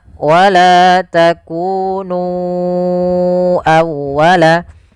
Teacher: Kemudian pada lafal nu awal ya di sini sama hukumnya dengan lafal bima anzaltu yaitu adanya mad jaiz munfasil maka kita harus memanjangkan nunnya sepanjang empat atau lima harakat